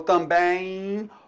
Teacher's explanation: Note então que o M em final de palavra, ele também pode produzir o som I.